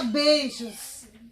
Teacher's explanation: Beijos é uma palavra em que a vogal E tem um som mais forte que o I, por isso que o I ele é semivogal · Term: ditongo decrescente